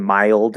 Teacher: small y That's why I call it a small y because you happen to very lightly hit that y position but you don't go fully into the Y position on purpose